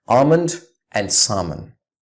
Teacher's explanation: It's salmon. The L again is silent in both of these words.